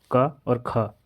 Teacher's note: जिनका उच्चारण कंठ से होता है, यानी कि गले से होता है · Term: कंठ्य ध्वनियाँ